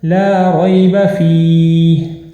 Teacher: کتاب، ذالک الکتاب لا ریب فیہ۔ اب یہاں پر لا ریب میں لام کو لازمی آپ نے کھینچ کر پڑھنا ہے اور 1 الف کے برابر آپ لمبا کریں گے